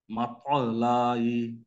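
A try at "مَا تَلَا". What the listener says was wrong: টান হবে না, মাতলাই।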